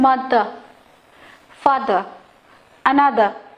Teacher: অ্যানাদার, শেষের আরটা আমি উচ্চারণ করছি না। তার মানে কি, ইংলিশে যখন আমরা পড়ি যদি শেষে আর থাকে সেটা সাইলেন্ট, মানে উচ্চ, মানে ওটা চুপচাপ হয়ে যায়, থেমে যায়, ওটা বলতে হয় না।